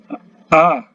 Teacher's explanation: hamzah a ya, berada di tenggorokan yang paling dalam